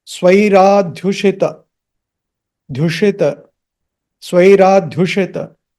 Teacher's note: That dha is half. There is no a after the h.